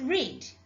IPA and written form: ri:d (read)